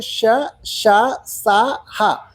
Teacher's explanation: ఊది పలకబడేవి అంటే ఈ అక్షరాల్ని పలికేటప్పుడు నోటి నుండి గాలి వేగంగా బయటకు వస్తుంది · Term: ఊష్మములు